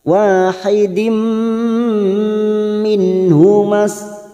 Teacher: nun sukun bertemu ha idhar halqi dibaca jelas